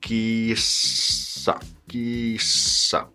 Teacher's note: We just have to prolong the S because it's double S.